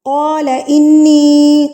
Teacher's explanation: قاف کو بھی پر کر کے پڑھیں گے